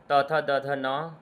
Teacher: त थ द ध न का उच्चारण स्थान है दंत यानी दंत्य